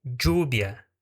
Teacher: Então nós vemos aí a presença de um D junto com J na pronúncia, né? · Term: cheísmo ou geísmo